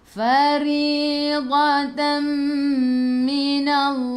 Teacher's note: Ri ra baris bawah kena baca dengan nipis senyum. Ri 2 harakat ada ya mad asli.